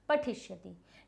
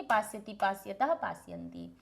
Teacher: षटकोण वाला मूर्धन्य श, जो मूर्धा से उत्पन्न होता है